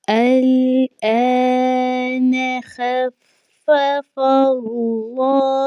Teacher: فا کے اوپر تشدید کی علامت ہے، اس کو 2 مرتبہ پڑھا جائے گا، ایک مرتبہ اپنے سے پہلے لفظ خوا کے ساتھ، دوسری مرتبہ اپنے ذاتی حرکت کے ساتھ ملا کر اس کو پڑھا جائے گا۔ اللہ کے نام سے پہلے چونکہ زبر آ چکی ہے فا کے اوپر، تو اللہ کا جو نام ہے یہ موٹا پڑھا جائے گا